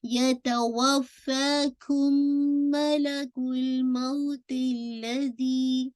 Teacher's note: میم ساکن کے بعد میم ہے تو ادغام میم شفوی، تو آپ کا غنہ ہوگا، میم کے اندر مرج ہو جائے گا